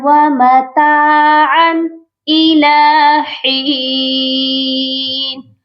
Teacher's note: یہاں پر غنہ نہیں ہوگا کیونکہ آگے حمزہ ہے جو کہ حروف حلقی ہے۔ جب بھی نون ساکن اور تنوین کے بعد حروف حلقی آتا ہے تو ہم اظہار کرتے ہیں، صرف ظاہر کرتے ہیں تنوین کو اور نون ساکن کو۔ · ہا کے ساتھ یا مدہ ہے، اس کو بھی ہم نے ایک الف کی مقدار لمبا کر کے پڑھنا ہے۔ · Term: اظہار حلقی